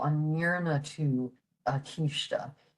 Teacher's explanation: in the Munster dialect, that ND is very nasal